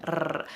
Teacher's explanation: That rolled R or trilled R is not found anywhere in the English language, at least in American English.